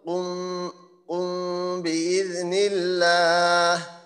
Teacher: আমি নিজে অনুভব করতে পারবো যে দুই ঠোঁটের মাঝখানে কিছুটা ফাঁকা আছে, এইভাবে আমরা গুণাটা করব। যেমন উম উম বিইذনিল্লাহ, আর কি একটু অস্পষ্ট হবে, আসলে ইকফা অর্থ তো অস্পষ্ট করা।